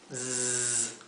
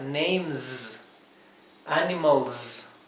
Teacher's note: la S final que llevan, como casi siempre las S finales, no es la S suave, sino que es la S como de un zumbido